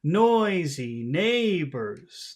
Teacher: we have the the common pattern of big small big small noisy neighbors that's the Rhythm